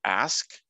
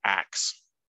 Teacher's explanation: in Modern English with the verb ask it's often metathesized to be axe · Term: auditory metathesis